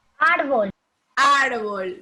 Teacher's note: Porque el acento lo lleva en ar. En ar, ¿verdad?